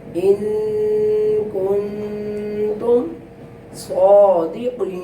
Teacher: صاد پر پڑھا جائے گا اور قاف جو نقطہ والا ہے اسے بھی پر پڑھے گا